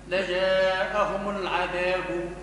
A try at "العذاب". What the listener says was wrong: العذاب، نقف دي مع السكون، معاش تقف لي على المتحرك.